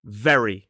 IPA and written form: ˈveri (very)